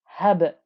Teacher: I get this bouncy noise of the qalqala